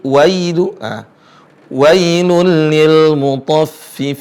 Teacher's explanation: huruf ya sukun, bukan wai tapi pakai i